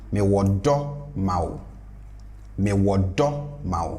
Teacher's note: So I push the tone up because that is the noun.